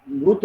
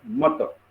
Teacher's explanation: संस्कृत मध्ये कसा होता, तो मृत होता, त्याला रू स्वर जोडलेला होता म ला, म जे व्यंजन जे आहे त्याला रू हा स्वर जोडलेला होता संस्कृत मध्ये, परंतु पालीमध्ये त्याला रूचा काय होतो, अ होतो, म्हणून अर्ध्या मला अ जोडला तर तो पूर्ण म तयार झाला आणि तो जो होता तो जसा तसा आपण त्याला जोडला.